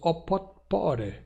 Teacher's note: Agora, se nós reduplicamos, temos opotpore, com um T não explodido diante de P no meio da palavra, e o T que sofreu lenição para R diante de uma vogal temática final E, neste caso.